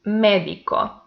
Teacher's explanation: The antepenultimate syllable is the stressed one, and by that is esdrújula, so it has accent mark.